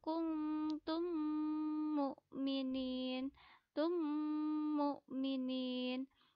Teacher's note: disertai dengan dengung contoh Inginku mtum mukminin ada mim sukun disini dibaca seperti bertasydid atau double dan disertai dengung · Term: idghom misli